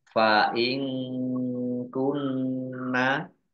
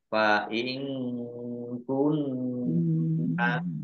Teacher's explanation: Fa ing kunna nun sukun bertemu dengan huruf kaf, bacaan ikhfa, dibaca samar-samar. Nun tasdid dibaca gunnah atau mendengung, ya. Ditahan 2 harokat.